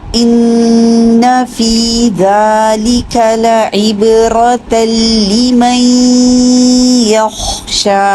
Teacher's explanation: ان میں نون کا غنہ پورا کریں گے، نون مشدد ہے ، زبر لمبی نہیں کریں گے، فی 2 حرکت لمبا کریں